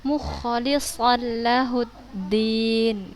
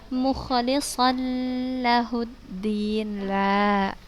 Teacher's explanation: Ini huruf idgham bila gunnah ya. Ketika membacanya kita masukkan tanpa berdengung ya.